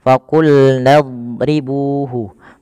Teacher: huruf dot itu kan makhrajnya sisi lidah kita bertemu dengan gigi geraham atas.